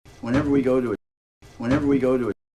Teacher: those t's can get turned into a flap especially with the word too